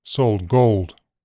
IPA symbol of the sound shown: oʊ